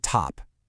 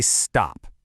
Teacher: Feel that little puff of air? Okay, now say stop. The puff is gone, right? Even though the T sound is physically different in both words, our brain just hears it as the same T sound.